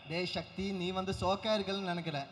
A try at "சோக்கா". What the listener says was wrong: சோப்பு இல்ல brother, சோக்கு. சோப்பு இல்ல, சோக்கு. ஏ சக்தி, நீ சோக்கா இருக்குன்னு நான் நினைக்கல. சோக்கு சோக்கு.